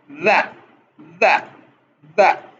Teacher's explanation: اس کی آواز زبان کے اوپر والے اور نچلے دانتوں کے درمیان اس طرح رکھنے سے پیدا ہوتی ہے کہ دونوں یعنی اوپر والے اور نچلے ہونٹوں کے درمیان تنگ سی جگہ رہ جائے. پھر دال کی آواز گردن کی صوتی تاروں کو چھڑتی ہوئی آہستہ آہستہ تھرکتے ہوئے تاروں کی طرح نکلتی ہے